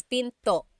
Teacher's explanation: Don't forget to stop the sound at the end. That's called a glottal stop.